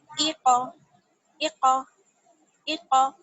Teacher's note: قاف جو ہے وہ حروف مستعلیہ میں سے ہے، موٹا پڑھا جاتا ہے نا، تو اس کو اس طرح سے پڑھیں گے، ایقا، ایقا، ایقا۔